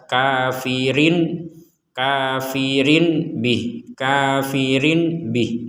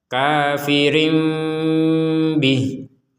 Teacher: Nah, ketika tanwin, ini asal katanya tanwin, ini asal katanya adalah harokat kasrotain bertemu dengan huruf ba, maka dibacanya seperti membaca huruf mim, tapi setelah itu yang keluar ba.